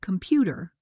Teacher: For example, in the word computer, we say com. The middle syllable is stressed.